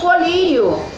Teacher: colírio, que também é uma palavra paroxítona, porque a sílaba tônica é a penúltima, é o li